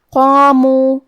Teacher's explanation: کلمت قامو میں قاف ہے اور اس کے بعد مد الف ہے. مد الف اپنے پیچھے والے حرف کا حکم لیتا ہے تفخیم میں اور ترقیق میں، لہذا ہمیں مد الف کو بھی بھاری آواز میں پڑھنا ہے